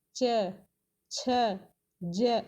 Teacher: ऊपर जीभ टच हो रही है ना, हल्का सा टच करती है इसमें, वो होता है हमारा तालु से उच्चारण